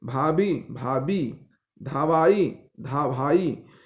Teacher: जब दो महाप्राण ध्वनियां पास पास हो तो इनमें से द्वितीय महाप्राण अल्पप्राण बन जाते